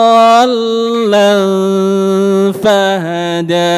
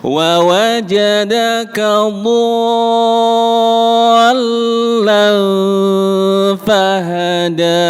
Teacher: Yang penting setelah dhot panjang 6 harokat, lamnya ada tasydidnya.